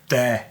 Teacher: there are words that have TH in it, but it's pronounced like a D in Irish.